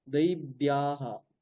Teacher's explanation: এইরকম যখন এরকম সংযুক্ত বর্ণগুলো থাকবে অন্তস্থ বয়ের ক্ষেত্রে, সেইগুলো উচ্চারণ করতে হবে বর্গীয় বয়ের মতো